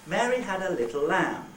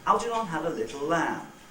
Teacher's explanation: So, the 3 syllables of Algernon are a bit quicker.